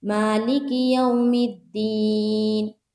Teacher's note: واو لین اور یا لین، دونوں میں کھینچیں گے نہیں، نرمی کے ساتھ اور جلد ادا کریں گے